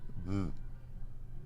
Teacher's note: sound in in Spanish and also an Italian and Greek and it's called a beta and it's like a B and it's like a V at the same time but it's neither